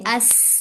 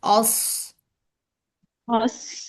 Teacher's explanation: सीन बारीक लफ्ज है और स्वाद मोटा